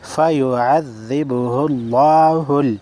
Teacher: لفظ اللہ سے پہلے پیش ہے, لفظ اللہ کو موٹا پڑھیں گے